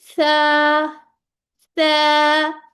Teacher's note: अपनी जो जबान के आगे से नोक है उसको थोड़ा सा बाहर निकाल लें दांतों से। अब आपने मुंह से बाहर निकाल के उसको रख नहीं लेना, बल्कि थोड़ी सी आपकी जबान बाहर आएगी, ठीक है।